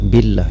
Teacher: karena lafaz jalalah di belakangnya baris kasrah, maka dibaca tarqiq ataupun dibaca tipis. Billah, jangan billah tapi billah, mad asli panjang dua harkat.